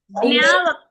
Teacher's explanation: జ్ఞ జన్ అనేది ఈ ముక్కు నుంచి రావాలి జ్ఞ ఇప్పుడు జ్ఞ అనంగానే జ్ఞ కూడా అంతే ముక్కు నుంచి వస్తది అది